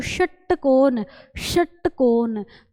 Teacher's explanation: उच्चारण करते समय जीभ का पीछे का जो भाग है ना वो मूर्धा से टच होता है। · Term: मूर्धन्य